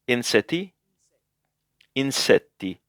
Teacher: Make sure that you make the T sound a little bit longer, because the double T here.